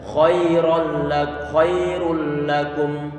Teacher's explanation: dalam kondisi fathah tidak boleh koi koi tapi kita buat datar saja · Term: huruf yang tebal